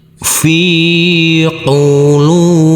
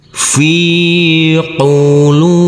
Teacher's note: Huruf fa kita baca panjang dengan panjang dua harakat karena huruf fa yang berkasrah i ini bertemu dengan huruf ya sukun.